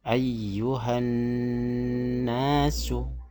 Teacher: huruf lam dimasukkan ke huruf non. Lamnya enggak terbaca.